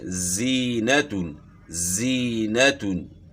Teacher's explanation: زا کی آواز باریک اور سیٹی والی، جیسے زینتون، زینتون، سیٹی کی مثل آواز بیچ میں پیدا ہوتی ہے۔